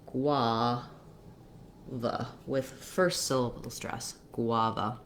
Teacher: g u actually says the g and the and then uh we don't have an any kind of vowel sound for the u we just have the consonant or the glide the w sound then the letter a says the ah vowel the second letter